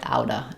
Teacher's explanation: I won't drop it. But oftentimes in this combination of out of, people will say it more like outa, and they'll change it to a schwa